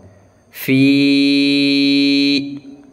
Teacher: di mana ada kasrah bertemu dengan Ya Sukun cara bacanya dipanjangkan dua harakat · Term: mad tabi'i